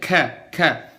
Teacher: Huruf kaf itu lidahnya biasa aja, istifal, rendah.